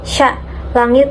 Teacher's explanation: Kemudian huruf yang dari al-lisan atau lidah, contohnya seperti huruf shin itu sya, langit tengah, gesekan tidak bersuara